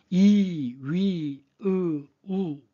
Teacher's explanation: 우를 발음하면 혀끝이 목구멍 쪽으로 많이 들어가서 좀 토할 것 같은 느낌이 들죠? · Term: 후설모음